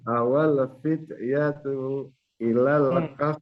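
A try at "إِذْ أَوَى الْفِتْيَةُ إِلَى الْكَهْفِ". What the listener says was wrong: Tunya pendek.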